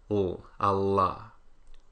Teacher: the lateral approximate L, which if you're American is usually velarized too